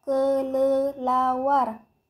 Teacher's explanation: vokal e Tengah atas pusat tak bundar